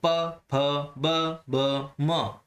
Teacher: बिना होठों को हिलाए, बिना होठों को टच करे हम प वाली लाइन नहीं बोल सकते। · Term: ओष्ठ